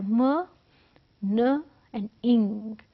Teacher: 3 different points and 3 different sounds. तीनों में nose involve है, इसलिए nasal sound है because air passage is blocked at some point and air moves out through your nose.